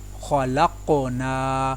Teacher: خا کو پر ادا کیا، قاف کے اوپر قلقلہ کیا، قاف کو بھی پر ادا کیا، نون کے ساتھ الف مدہ کو ادا کیا۔